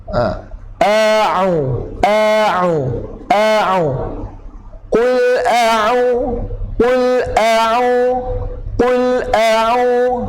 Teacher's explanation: Setengah orang ni ramai dia baca dengan banyakkan dia baca dengan hidung huruf ain. Huruf ain bukan di hidung, dia di tengah kerongkong.